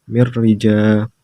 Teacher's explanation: karena nun mati bertemu dengan huruf ro dibaca tanpa dengung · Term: igom bilah gunah